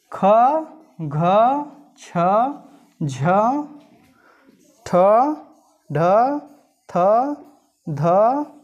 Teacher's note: महाप्राण व्यंजनों के उच्चारण में हकार जैसी ध्वनि विशेष रूप से रहती है, यानी इसमें हकार जैसी ध्वनि विशेष रूप से रहती है, श्वास अधिक मात्रा में निकलती है।